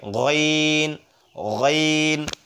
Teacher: গাইন উচ্চারণ হবে মানে হলকের শেষ থেকে